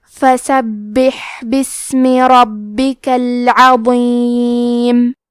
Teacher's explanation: فسبح میں با کے تشدید کو ظاہر کریں گے اور اسے 2 حرف کے برابر پڑھیں گے کیونکہ یہاں ہا ساکن ہے تو ہمیں ہا کو ہمزے سے پڑھنا ہے.